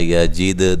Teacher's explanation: دال کو ہلا کے پڑھنا ہے، قلقلہ کرنا ہے